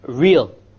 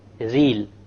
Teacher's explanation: the English R comes from the middle of the tongue and the Arabic comes from the tip of the tongue. It is very important that when we pronounce the R in Arabic, the ra in Arabic, we do not roll the tongue.